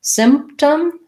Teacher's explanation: Length and then short. Symptom, we don't really say that P. We don't release it. It's not symptom.